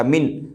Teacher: جیسے یہ لکھا ہوا ہے اعوذ، لیکن ہم اس پہ رکنا چاہتے ہیں تو اس کو پڑھیں گے اعوذ اعوذ، زال کے اوپر پیش ہے، اس زال کو جزم سے بدل دیں گے، اعوذ باللہ اعوذ باللہ اعوذ باللہ۔ من پر اگر رکنا ہے، مینا پہ رکنا ہے تو اس زبر کو جزم سے بدل دیں گے اور ہو جائے گا من